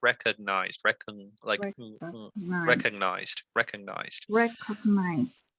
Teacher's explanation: that g is kind of you don't really need to pronounce it